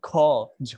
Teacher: আপনি যদি বের করে উচ্চারণ করেন খ ঝ বাতাস বেশি বেরোবে এটাই হচ্ছে মহাপ্রাণ ওকে বর্গের দুই চার হচ্ছে মহাপ্রাণ বাংলা বর্ণমালায়